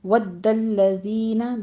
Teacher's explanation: دال کے اوپر تشدید لام کے اوپر تشدید سختی کیجئے، سختی سے پڑھنا ہے اس کو